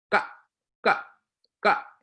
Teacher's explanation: gonna the back of your throat makes the inflection and your you shouldn't feel a puff of air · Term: unaspirated